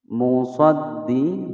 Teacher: Musaddi dal bertasydid ditekan